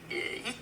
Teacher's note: notice the H in heat kind of disappears when you're doing it in a French accent. It would be eat, so it's almost like you're eating something. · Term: The H goes away